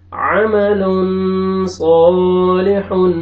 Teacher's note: یہاں پہ اخفا، تنوین کے بعد صاد آ رہا ہے، اخفا کریں گے